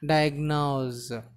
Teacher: Here the last syllable is, it is not s, it should be pronounced as z. Diagnose. Here da sound, e sound, a sound.